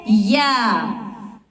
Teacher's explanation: جب زبان کا درمیان والا حصہ اوپر کے بالمقابل تالو سے لگے تو یہ حروف ادا ہوتا ہے